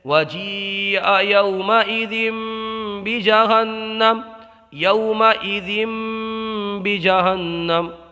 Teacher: یہاں پر تنوین کے بعد میں آنے والا حرف با ہے، تو یہاں اقلاب کا قاعدہ ہوگا، تنوین کو میم سے بدل کر کے پڑھیں گے